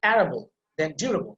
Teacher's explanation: you have to put emphasis on the first syllable